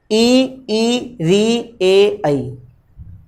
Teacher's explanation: इनका उच्चारण करते समय जीभ का आगे वाला जो हिस्सा है वही प्रयोग में आ रहा है, इसलिए ये अग्रस्वर है।